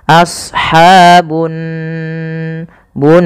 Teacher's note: ada gunah pada lafal Nun cara membacanya yaitu ditahan suara nunnya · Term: gunnah